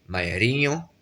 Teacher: Mais si on nasalise un tout petit peu ce i, maierio, c'est la marraine. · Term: semi-nasalisé